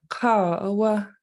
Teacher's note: the word KA for man will actually be a falling long tone so it will go high and then come back down